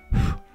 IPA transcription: ɸ